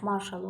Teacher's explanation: Marsal yox, yəni vurğu birinci hecəyə düşmüş olur. · Burada da məsələn, marşal sözü istisna sözlərdən biridir ki, Yəni burada sonda al var, vurğu əslində sona düşməlidir, lakin sona düşmür, marşal olur, marşal yox. Yəni vurğu birinci hecəyə düşmüş olur.